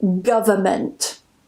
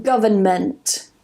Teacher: one transcription does not contain the N and the other one does contain the N